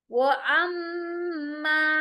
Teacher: वो अम्मा, लंबा होगा, मीम पर गुन्ना होगा और उसके बाद अलिफ आ रहा है